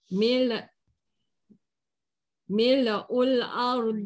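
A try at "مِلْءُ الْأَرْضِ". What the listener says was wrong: Jaga lam. lam mati. Lam, lam mati jangan mil. Ha, tak mau mil. Ul. Ha, tak mau.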